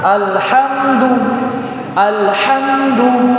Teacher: Ketika alif lam bertemu dengan huruf ha, maka dia dibaca izhar